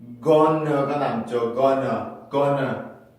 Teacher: 아까 1, 2, 2를 보셔서 알겠지만 going to도 마찬가지로 이중모음에서 하나만 남게 되고 ng 사운드는 n 소리로 바뀌게 되고 슈와 모음은 원래 그 중요하지 않은 단어의 모음을 슈어로 바꿔주고 NT가 연속적으로 될 때는 T가 없어지고 하는 현상들이 복합적으로 적용이 돼서 건어로 태어나게 되는 거예요.